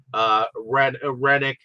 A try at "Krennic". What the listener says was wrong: Krennic. No, you said Rennick. Krennic with a K.